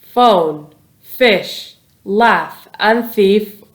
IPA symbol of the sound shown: f